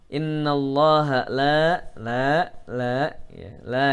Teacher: jalalah mufakhamah lamjalalah yaitu lam yang khusus berada di kata Allah dia dibaca tebal karena sebelum lafadz Allah ada huruf berharokat fathah maka dibaca tebal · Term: lam jalalah mufakhamah